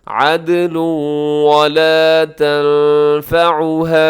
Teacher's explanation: تنوین ہے اور تنوین کے بعد ولا کے شروع میں واو ہے، یہاں پر بھی ادغام کیجیے گا، عدل ولا تنفعها ولا تنفعها.